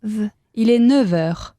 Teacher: Cuando enlazas las dos palabras, haces el sonido v.